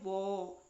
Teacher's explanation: दंतोष्ठम, जब आप बोले वो, तो वो में आपकी जो जिह्वा है वो दांत को भी स्पर्श करेगी और आपके होंठ भी, उसमें होंठ भी यूं मुड़ जाएंगे, होंठों की भी सहायता ली जा रही है।